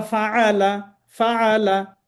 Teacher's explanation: কাইফা ফালা যদি হয় তাহলে ফা জবর ফা, লাম জবর লা, فعل ফালা, আইনটা গেল কোথায়? ওইটা মিস্টেক হয়ে যাবে।